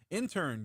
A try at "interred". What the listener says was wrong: Yeah, interred. You put an in there. There's no in that.